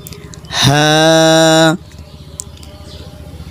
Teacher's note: এই হাটা হলো বড় হা, কোনো গলার ভিতরে যাবে না, একদম ছেড়ে দেব।